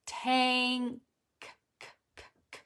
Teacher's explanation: Now, why does the N go to the back? Because the following letter is a K